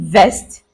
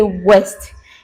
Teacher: Germans sometimes replace the V sound with the w sound